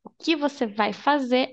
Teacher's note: we don't have to mention the R at the end of verbs in Portuguese.